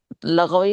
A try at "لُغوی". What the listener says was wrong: لغوی نہیں, لغوی, لام پہ ضمہ.